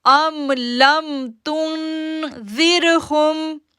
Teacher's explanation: ہا پیش میم ساکن ہم، ام لم تن، ام لم تنذرہم، تنذرہم. زال کو سافٹ پڑھنا ہے اور اس کو جو ہے وہ را کے ساتھ جوڑیں گے